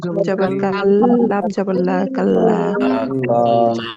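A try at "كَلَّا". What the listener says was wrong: যে বলতেছেন লাম জবর লা, তিনি ভুল করতেছেন। এই লাম আলিফ জবর, লা জবরের বাম পাশে খালি আলিফ, এক আলিফ টান হবে এখানে। কাল্লা, কাল্লা।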